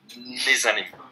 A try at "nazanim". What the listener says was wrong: Je pense que, comme dérivant, toi aussi, tu as la tendance à dire ni zanim. Donc, au nazanim.